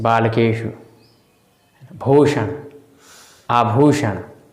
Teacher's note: मूर्धा की सहायता से जैसे बालकेषु, भूषण, आभूषण, है ना, तो वो मूर्धन्य श हो गया।